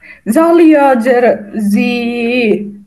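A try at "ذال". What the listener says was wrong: ঝাল নামে কোনো হরফ নাই, হ্যাঁ। ঝা, এটা জাল।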